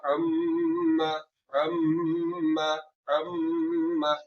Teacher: इसमें जो गुन्ना होगा मीम मुशद्दद में वो गुन्ना लंबा होगा, वो मिकदार में ज्यादा होगा